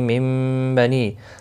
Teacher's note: نون ساکن کے بعد با آیا ہے، یہاں پر قلب ہوگا